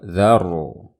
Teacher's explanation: ada ro sukun sebelumnya fathah, ro-nya dibaca tebal